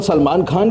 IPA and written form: səlˈmaːn xaːn (Salman Khan)